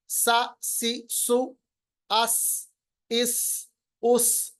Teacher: सीन की आवाज बहुत तेज होती है, इसको सफीर भी कहते हैं, चुड़िया की आवाज, जैसे चुड़िया तेज आवाज निकालती है।